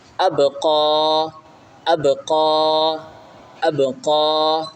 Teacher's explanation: با کے اوپر جزم ہے، جزم ملانے کے لیے ہوتا ہے حمزہ با زبر اب، حمزہ با زبر اب، قاف کھڑا زبر قا، قاف کو ایک الف کی مقدار کھینچیں کیونکہ اس کے اوپر کھڑا ہے، کھڑا کو ایک الف کی مقدار کھینچ کے پڑھا جاتا ہے۔